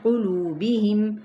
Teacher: لو پہ واو مدہ، میم پہ اظہار شفوی